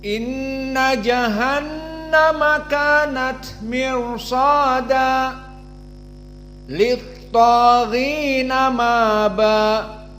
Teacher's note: Namun perlu diperhatikan ahkamin nun musyaddadah, maka dia gunnah dalam berbagai qiraat sepakat. Maka inna gunnah, makhrajnya dari hidung khaysum, dan 2 harokat. Inna jahannama sama, jahannama nunnya musyaddadah, berarti makhrajnya dari khaysum.